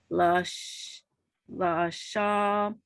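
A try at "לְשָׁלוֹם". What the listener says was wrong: Not la.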